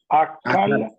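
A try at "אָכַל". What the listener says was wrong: Alors, c'est une belle erreur parce que normalement, on devrait dire, il n'y a pas le point dans le kaf. Achal, voilà. Achal.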